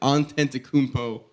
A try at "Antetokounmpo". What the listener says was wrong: Don't forget the extra. You got extra syllable. Antetokounmpo.